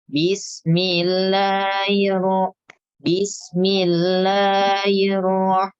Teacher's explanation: Huruf H di lafaz Allah itu membacanya itu tidak jelas. Maksudnya dia lemah. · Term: H tidak dibaca jelas